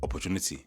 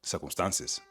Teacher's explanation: the Nigerian accent is syllable timed, meaning that each syllable is given roughly equal amount of emphasis. So what this does is create a steady, deliberate speech pattern where words are enunciated clearly without much vowel reduction. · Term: syllable timed rhythm